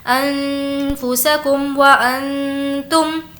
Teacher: اخفا ہونے کی وجہ سے نون کی آواز کو ناک میں چھپائیں گے